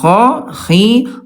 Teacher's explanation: kalau kha dia alhams ada udara